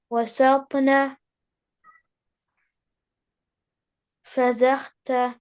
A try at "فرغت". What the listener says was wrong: No, this is wrong. فرغت. No, no. Don't move the letter ghain because it has sakin. فرغت.